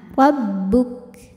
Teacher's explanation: syidah kuat tertahan rabbuk dari segi angin keluar anginnya rabbuk Nah untuk Kaf yang sukun keluar anginnya itu terakhir belakangan